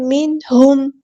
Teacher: میم ساکن کی آواز کو ہم یہاں پہ ٹائم نہیں لگائیں گے، اظہار شفوی ہو رہا ہے